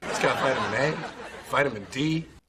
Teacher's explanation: In American English, the I at the beginning would be pronounced like an I, so vitamin. And the T would be pronounced very soft, in my opinion, a very soft T. Vitamin, almost like a D